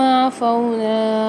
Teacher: عفونا میں واو مد آ رہی ہے تو یہاں پر فا کو ایک الف مقدار کھینچ کے پڑھیں گے۔